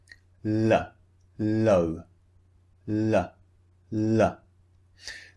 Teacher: Sound the tongue is is just behind your front teeth so it's behind the front teeth touching the top of the mouth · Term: L Sound